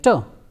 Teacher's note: alveolar sounds like term so during the production of terse ound the tip of the tongue touches to the teeth ridge and there is a complete closure of the air